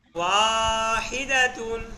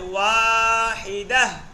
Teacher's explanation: ওয়াকফ অবস্থায় গোলতা হা হয়ে যায়